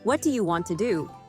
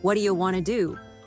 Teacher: But when a native speaker says it quickly, it sounds like, what do you want to do? Yes, what do you becomes what do ya, and want to becomes wanna